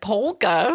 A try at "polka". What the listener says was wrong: yeah, but you don't say the L. It's just polka.